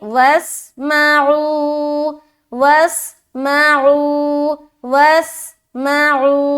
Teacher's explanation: वासिन ज़बर वस, सीटी की तरह अदा करेंगे